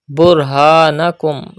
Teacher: Pronounce ra with thicker voice because there is pesh before ra sakin.